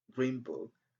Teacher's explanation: In green book, N becomes M, green book, because of the sound B.